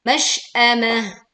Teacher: Tak marbutoh dibaca ha sukun saat berwakof.